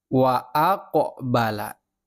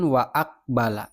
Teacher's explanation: nah qofnya ini memantul wa aqala bukan waakbala bukan salah jadi bacanya memantul qofnya ini